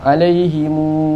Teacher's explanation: bila mana ada hamzah pada mim jamak tu, mim mati tu, dia akan jadi dengan 6 harakat.